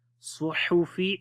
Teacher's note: Suhufi, sad in heavy sound, ha from the middle of the throat.